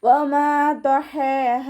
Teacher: പ ഇസ്തിഅലാൻ്റെ ലെറ്ററാണ്, തഫ്ഹീം ചെയ്തിട്ട് ഉച്ചരിക്കുക. ഹ എവിടെ നിന്നാണ് പുറപ്പെടുന്നത്? നമ്മുടെ തൊണ്ടയുടെ മധ്യഭാഗം, വസത്തുൽ ഹൽക്കിൽ നിന്നും. ഹംസയായി പോവാതെ ശ്രദ്ധിക്കുക കേട്ടോ.